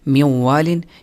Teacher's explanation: اس مثال میں آپ دیکھ لیں میوں والن، یہاں نون ساکن کے بعد واو ہے، ینمو میں سے واو ہے، لہٰذا یہاں ایک تو ادغام بھی ہو گیا کیونکہ نون واو کے اندر گھس گیا، اس کے اندر چھپ گیا، نون نہیں پڑھا جاتا بلکہ واو پڑھا جاتا ہے، اور واو کے اوپر شد بھی آ گیا اور اس کے ساتھ غنہ بھی پیدا ہو گیا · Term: ادغام مع الغنہ